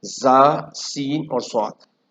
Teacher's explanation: زا، سین اور صاد، یہ سیٹی کے ساتھ پڑھے جائیں گے، اور اس میں صاد میں ایک صفت اور بھی ہے کہ یہ ہمیشہ موٹا پڑھا جائے گا۔